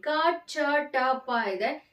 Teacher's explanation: ಕಡಿಮೆ ಉಸಿರಿನ ಸಹಾಯದಿಂದ ಉಚ್ಚಾರ ಮಾಡ್ತಕ್ಕಂತಹ ಅಕ್ಷರಗಳು ಹಾಗಾಗಿ ಇದು ಅಲ್ಪಪ್ರಾಣ ಅಕ್ಷರಗಳಾಗುತ್ತೆ